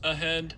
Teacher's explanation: You can hear the breathy voice of the H there. And so you can see that in the spectrum. · this vowel is a lot longer than it normally is, but I'm doing that because that helps make the H in the middle of this voiced